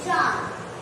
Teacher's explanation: यस, इसे हम चंद्र बिंदु कहते हैं आम बोलचाल। अनुनासिक का उच्चारण करते हैं तो आवाज हमारी नाक और हमारे गले दोनों से आती है